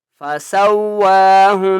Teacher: نون کے اوپر تشدید غنہ کریں گے